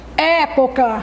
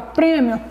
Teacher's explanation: é de época tem um som aberto certo e lá no prêmio letra e da palavra prémio tem um som fechado